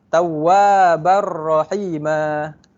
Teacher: Apabila tanwin bertemu ra, bunyi nun dekat tanwin tu hilang.